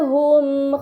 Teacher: mim sukun bertemu dengan huruf mim ini dinamakan idgham mimi maka mim sukun dibaca secara melebur dengan gunah yang dipanjangkan